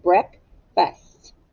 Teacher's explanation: now breakfast has two syllables break fast but it's tricky because the ea you hear the short e sound instead of the long e sound